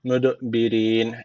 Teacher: En sonda da meddi arız tecviti var. Bir elif uzatarak duruyoruz. Fera ile bakın uzun medden sonra uzun elif gelmiş. · An möd derken d harfi cezim almış. Kalkale tecviti var. Birazcık vurguluyoruz.